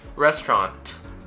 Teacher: when it comes to the final T, you can either say it or aspirate it